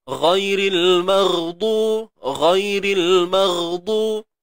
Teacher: bila kita sebut ghain ni, pangkal lidah akan terangkat bagi memenuhi sifat isti'la'nya. Terangkat pangkal lidah bagi menunjukkan tebalnya huruf ghain tu.